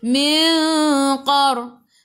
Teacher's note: jadi ikhfa hakiki dengan 2 harakat, bawa ke sisi huruf qaf.